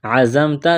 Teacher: زا میں سیٹی کی آواز پیدا کریں گے